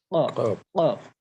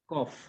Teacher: এরপর আমরা পড়েছি 4 নম্বর মাখরাজ, যেটা জিহ্বার গোড়া তার বরাবর পরে তালুর সাথে লাগিয়ে কফ। তো আমরা যখন কফ উচ্চারণ করব, অবশ্যই যেন আমাদের এটা ব্যাকগ্রাউন্ড একটা সাউন্ড উচ্চারণ হয়।